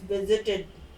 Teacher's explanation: stress on the first syllable and the second syllable we do not stress